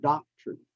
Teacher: has the short sound because it's in the second syllable and the syllable is not stressed